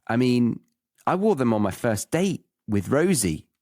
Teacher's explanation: we've got date and Rosie as the stresses in the sentence